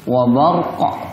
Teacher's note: ketika waqaf ada bunyi pantulan yang ikut